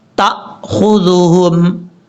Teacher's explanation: تا کے بعد جو حمزہ جھٹکے سے پڑھیں گے